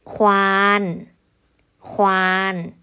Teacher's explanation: คำที่มีพยัญชนะต้น2ตัวและออกเสียงกล้ำกันไปออกเสียงควบกันไป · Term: คำควบกลัม